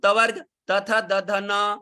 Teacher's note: ये दंत्य से बोले जाते हैं